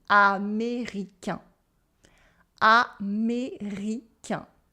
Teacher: you should have your tongue go backwards and the tip touching the teeth. And the air go through your nose.